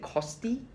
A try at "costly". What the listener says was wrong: Costly. Yeah, so put the L in there for costly, right?